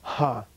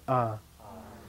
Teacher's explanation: low tone ah okay no H stand in front of it you don't go ha okay it's just ah